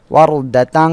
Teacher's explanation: র সাকিন তার ডাইনে জবর থাকলে র মোটা করে পড়তে হবে